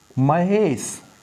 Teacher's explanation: महा का अंतिम वर्ण दीर्घ आ, ईस का पहला वर्ण दीर्घ ई, इन दोनों के मिलने से ए बनेगा, और शब्द क्या बनेगा, महेश। आ और ई मिलकर के ए हो गया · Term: गुण संधि